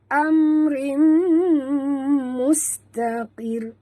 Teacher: mus bunyikan safir pada huruf sin yang mati